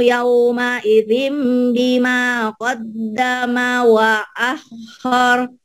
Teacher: Idin ini ada mim. Bunyi N-nya berubah menjadi M. Ini iklab. Karena tanwin ini ketemu ba.